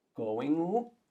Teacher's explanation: that weird sound that is not an n and not a g is just one sound that blends both sounds together